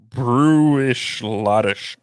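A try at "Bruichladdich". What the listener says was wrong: i think it's pronounced lottie at the end you don't pronounce the sh at the end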